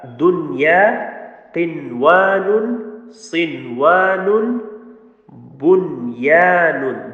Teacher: So here there is no idgham, no merging thing happened like that. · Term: Izhar mutlaq